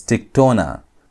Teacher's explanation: Notice I'm putting the emphasis on tona because we have an accent there.